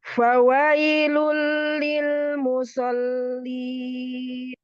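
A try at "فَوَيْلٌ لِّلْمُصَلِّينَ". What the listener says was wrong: Fawailul lil musallin. Itu hilang sod tebelnya. Tebel sodnya tetap.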